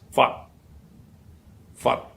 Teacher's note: Again, it ends with an unvoiced t.